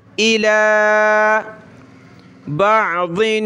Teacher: तनवीन का इख्फा होगा, नाक में आवाज़ पैदा करेंगे, साउंड इन नोज़